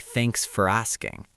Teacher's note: English is a stresstimed language which means some syllables get emphasized while others get reduced. When you say thanks for asking the word for becomes almost invisible. It sounds like thanks for asking.